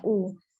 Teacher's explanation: lau tidak dipanjangkan tetapi disempurnakan waw sukunnya